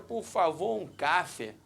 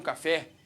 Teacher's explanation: quando você fala café, a sílaba tônica é o fé